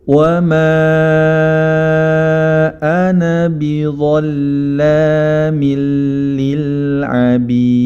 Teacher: Hal ini menunjukkan bahwa huruf mad tidak dibaca panjang ketika kita wasal atau meneruskan bacaan